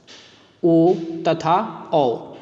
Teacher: इन ध्वनियों के उच्चारण में कंठ और होठ की सहायता ली जाती है। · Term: कंठोष्ठ्य ध्वनि